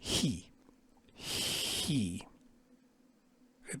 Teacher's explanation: We don't have any sound like this in English. It's sort of a rough, like an H sound with a little bit of friction in the palate.